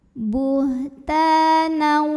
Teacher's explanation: ta mad tabi'i karena ada alif yang didahului baris fathah. Cara membacanya dipanjangkan taknya 2 harokat. Mad tabi'inya mad tabi'i zahiri karena ini terlihat alifnya jelas.